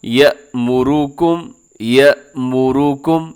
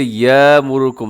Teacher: ان اللہ یأمرکم، یا زبر حمزہ، یا یہ حمزہ ہے یہاں پر، اسے اکثر لوگ الف پڑھ دیتے ہیں، تو الف اور حمزہ میں فرق ہوتا ہے کہ الف کو آپ جھٹکے سے نہیں پڑھتے، نرمی سے پڑھا جاتا ہے، جبکہ حمزہ کو جھٹکے سے ادا کرنا ہے۔ یأمرکم، یأمرکم، اسے یامرکم نہیں پڑھنا بلکہ یأمرکم۔